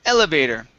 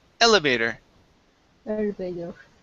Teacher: The stress is at the very beginning.